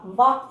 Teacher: ചുണ്ട്. പല്ലിൻ്റെയും ചുണ്ടിൻ്റെയും സഹായത്തോട് ഉച്ചരിക്കുന്നത്. അതുകൊണ്ട് ദന്തോഷ്ട.